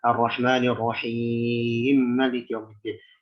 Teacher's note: Ketika wasal maka dia mesti diidgham, kabir.